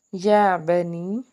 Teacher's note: یا جو ہے اس کے اوپر کھڑی زبر ہے، ایک الف کے برابر کھینچ کے ادا کریں گے۔